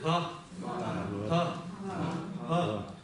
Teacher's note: И теперь смотрите, вот это па, она опять нечто среднее между па и ба, но не такое звонкое, как ба, и произносится в низком тоне